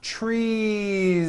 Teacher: it's not trees with an unvoiced S it's trees with that voiced ending